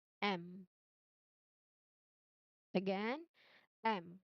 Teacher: No you should it should be closed your lips. So the air here is temporarily completely blocked in the mouth and goes only out through your nose. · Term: nasal sound